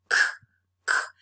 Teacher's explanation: we can't perceive any vibration of the vocal cords, so k is voiceless. That means that the plural morpheme is going to be realized as a voiceless sound too.